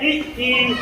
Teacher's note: जैसे ई ई, जैसे कह रहे हैं ई ई में, अब देखते हैं ई, तो हमारा जो जीभ है वह हमारे ऊपर के आगे के भाग में टच होता है, इसलिए इसका उच्चारण स्थान तालव्य है।